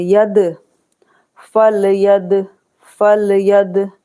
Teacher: दाल पर कलकला होगा, क्योंकि दाल पर साकिन है, कलकला वाले हुरूफ है, कलकला करेंगे।